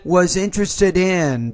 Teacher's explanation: you have to take the d and you blend that to the first vowel of the next word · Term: blending